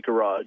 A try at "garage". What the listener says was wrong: Say it again. Garage. He's thrown an extra R in there. It's a bonus R. Free R's for everyone. There are at least 6 pronunciations of that word, G-A-R-A-G-E, that I know, but that's not one of them. He's got an R insertion thing happening.